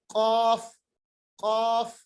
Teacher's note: जुबान के आखिरी हिस्से को हम ऊपर के तालू के साथ जोड़ देंगे। जुबान का आखिरी हिस्सा जब ये ऊपर के तालू के साथ मिल जाता है तो हमारे पास कौफ अदा होता है।